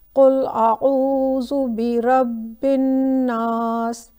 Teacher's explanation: دیکھیں با کے اوپر بھی شدہ ہے، نون کے اوپر بھی شدہ ہے، لیکن دونوں کو میں نے مختلف انداز سے پڑھا ہے۔ ایک کو میں نے elongate نہیں کیا ہے جبکہ ناس والے کو میں نے elongate کیا ہے۔ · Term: رول آف غنہ